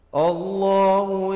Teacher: Allah dibacakan dengan wajah yang tebal, dengan lafzul jalalah itu dipanjangkan 2 harakat